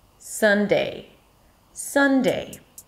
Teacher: The day is always the unstressed part, so whatever comes first, the first syllable of the days of the week, is always higher in pitch. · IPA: ˈsʌn-deɪ